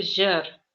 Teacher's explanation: Если вы обратите внимание, видите, я не говорю жир, да? Я говорю жир, то есть немножко протяжно